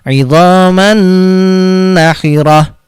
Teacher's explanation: tidak dibaca Idhar tapi di bacanya sambil didengungkan ditahan ke nonya ditasydidkan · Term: Idgham Bighunnah